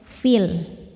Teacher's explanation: Cara bacanya panjang dua harakat fii. Namun ketika diwasalkan fii ini dibacanya pendek. Madnya gugur namanya takhallus bil hazfi. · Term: takholus bil hadfi